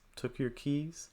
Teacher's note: I would suggest rising intonation at the end of each of these thought groups because there's an element of surprise here and when we can show that is by raising our intonation · I would probably go up on Keys